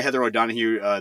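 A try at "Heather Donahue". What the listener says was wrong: There's no O [laughter] there. You're adding a No. You're trying to trying to make her more Irish sounding than she is.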